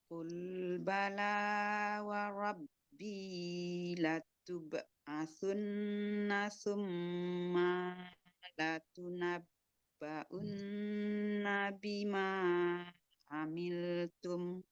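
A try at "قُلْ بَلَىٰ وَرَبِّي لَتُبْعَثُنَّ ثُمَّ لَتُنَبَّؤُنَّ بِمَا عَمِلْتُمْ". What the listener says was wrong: Ada tarik nafas tadi. Bukan tarik nafas. Ada ambil nafas tadi di tengah-tengah.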